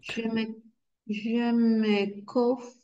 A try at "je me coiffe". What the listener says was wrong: O I wa, o I toujours wa. No va a ser cof, sino coif.